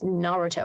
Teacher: this emphasis is on the first syllable instead of the middle one